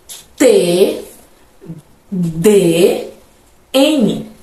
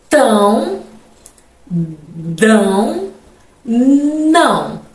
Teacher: Linguodentais, eu utilizo a ponta da língua e os dentes.